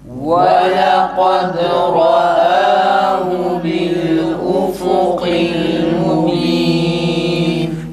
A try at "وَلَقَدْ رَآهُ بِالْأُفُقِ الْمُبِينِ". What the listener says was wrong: Ra'ahu kelimesindeki ha'nın ötresi çıkmıyor arkadaşlar. Yani tam net çıksın.